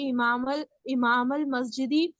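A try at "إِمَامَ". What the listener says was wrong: नहीं होगा, देखिए अगर हमजा ऊपर लगा है अलिफ के तो आ जबर, हमजा जबर आ होता है, अमामा। इमाम अलग लफ्ज है।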